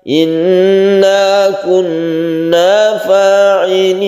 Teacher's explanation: Apa yang panjang atau ghunnah adalah nun dengan tashdid.